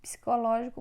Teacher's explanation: Psicológico, nesse caso, é proparoxítona, porque a sílaba tônica é a antepenúltima.